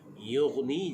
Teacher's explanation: Yughni jangan terlampau tekan, nanti dia akan jadi qalqalah. Huruf ghin ini bukan huruf qalqalah.